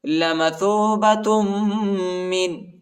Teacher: تا کو میم کے ساتھ ملائیں گے اور غنہ کریں گے